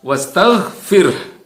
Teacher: ini haknya hak tebal, bukan hak tipis